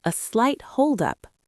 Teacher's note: Focus on that downward tone at the end to show you are in control.